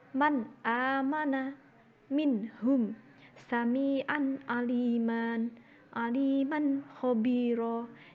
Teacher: dibaca semuanya jelas tanpa dengung dan tidak disamarkan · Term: idhar halki